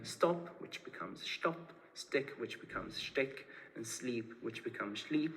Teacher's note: the palatalization of S and Z to the postalveolar fricatives sh and j, again voiceless and voiced